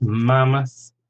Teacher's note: Mammoth, 2 syllables, stress on the first, mammoth. Marmalade, stress on the first syllable, 3 syllables again, marmalade.